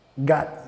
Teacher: Nota el T al final, la T, el sonido T, está solo como un stop T, solo hace el primer paso